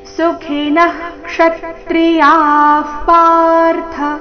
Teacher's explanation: ವಿಸರ್ಗದ ಉಚ್ಚಾರಣೆ ಅರ್ಧ ಫ ರೀತಿ ಯಾಕಂದ್ರೆ ಮುಂದಿನ ಶಬ್ದ ಪಾರ್ಥ ಪ ದಿಂದ ಪ್ರಾರಂಭ ಆಗ್ತಾ ಇದೆ